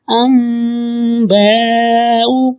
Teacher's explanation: یہاں پہ چھوٹی میم ہے اس لیے ام پڑھیں گے، ان نہیں پڑھیں گے